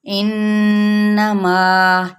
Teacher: غنہ کرنا ہے، یعنی ناک میں آواز کو ٹھہرانا